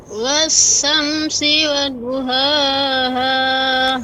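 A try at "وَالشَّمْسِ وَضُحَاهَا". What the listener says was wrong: Ya, huruf shin ya Ibu. Kurang nampak ya. Wash ya. Kemudian huruf dad. Wadu, du ya, du.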